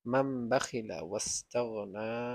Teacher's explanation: যে ছোট একটা মিম, এই মিম দ্বারা পরিবর্তন করে পড়তে হয়। এই নুন সাকিনকে না পড়ে আমরা পড়বো মিম, মাম পড়বো, মান না পড়ে পড়বো মাম